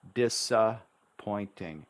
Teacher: We often just say the one P.